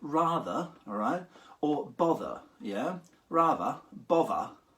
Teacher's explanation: the TH turning into a V sound in something like rather, all right?